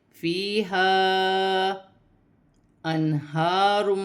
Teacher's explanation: نون ساکن میں غنہ نہیں ہوگا کیونکہ آگے ہا حروف حلقی میں سے ہا آ رہا ہے · مد منفصل 4 الف کی مقدار کھینچ کر پڑھا جائے گا